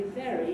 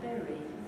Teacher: The lips are not entirely closed. And it's called a labiodental fricative simply because the top teeth are resting on the bottom lip.